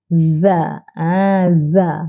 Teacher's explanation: Ya, di hujung lidah. Iaitu hujung lidah dikeluarkan 0.5 cm. Dan ditekan di gigi kecil atas tu. Kemudian bunyikan za.